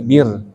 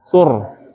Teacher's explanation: Nah, bir ini beda dengan sur. Sama-sama ra, tapi yang sur ini ra-nya tafkhim. Sur tebal ya. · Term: ra tafkhim